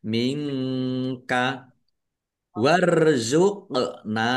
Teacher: bacaan qalqalah dibaca memantul ditampakkan pantulannya